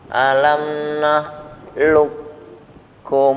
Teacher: sifat qalqalahnya kaf juga hilang otomatis, masuk ke huruf kaf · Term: kaf bertemu kaf